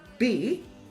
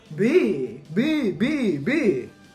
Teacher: If you say B, you will notice that it's not actually very voiced at all. I'm not saying B, B, B, B. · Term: lenis